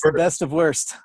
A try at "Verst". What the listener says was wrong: I mean, it's a W, so it's pronounced with a V, so it's Verst.